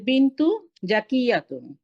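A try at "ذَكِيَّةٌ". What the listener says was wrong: দেখেন আপনি কিন্তু আপনি কিন্তু এই জাকিয়ুন, এটাকে জাকিয়ুন বলছেন। রাল এবং জ, বর্গীয় জ কিন্তু এক জিনিস না। রাল, একটা হচ্ছে জাল, একটা হচ্ছে রাল, সফট।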